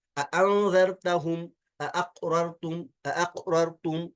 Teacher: ये दोनों हमजा कतइया हैं, इनमें से कोई ड्रॉप नहीं होगा, दोनों को खूब जाहिर कर लेंगे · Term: तहकीक